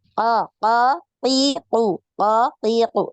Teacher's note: Ada hamasnya. So, Huruf ko itu kuat ya, kuat. Ko tidak ada nafas ya. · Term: huruf qaf